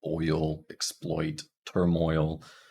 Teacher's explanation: can definitely feel some movement there when you say oi o it starts at the back and then it moves to the front